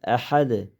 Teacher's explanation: Haning kanayni o'rtasidan chiqaramiz. Ahad. Ahad qilib o'qisak bo'lmaydi.